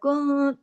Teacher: कुंतुम, अब नून साकिन के बाद ता है, यहाँ पे इख्फा हो रहा है, कुन, आवाज थोड़ी नाक में जा रही, थोड़ी बाहर हो रही है, और यहाँ भी गुन्ना हो रहा है लेकिन छोटा हो रहा है, पिछले गुन्ने से छोटा गुन्ना हो रहा है, कामिला गुन्ना हो रहा है।